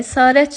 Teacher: əsarət sözündə A saiti uzanır